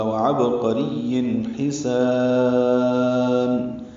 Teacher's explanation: اظہار ہے، وعبقری حسان، ہا وسط حلق سے ادا کریں گے، سین کو صفیر کی آواز سے ادا کرتے ہوئے لمبا کریں گے